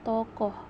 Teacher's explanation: direalisasikan sebagai bunyi O tengah bawah belakang bundar apabila berada pada silabel tertutup, seperti pada kata tokoh.